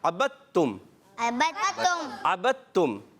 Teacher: دال تا کے اندر مل جاتا ہے، تو یہاں دال کی آواز نہیں آئے گی. اگر کوئی عبد تم پڑھے گا تو غلط. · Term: ادغام